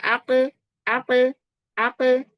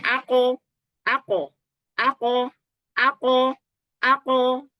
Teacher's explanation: huruf qof dia huruf yang istila mengangkat pangkal lidah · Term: tetap tebal